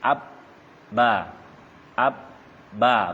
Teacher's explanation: Berarti bibir, berarti ba itu huruf bibir. Artinya berarti keluar dia dari kedua bibir.